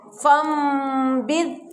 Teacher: اس نون کو میم سے بدل کر غنہ کے ساتھ پڑھنے کو اقلاب کہتے ہیں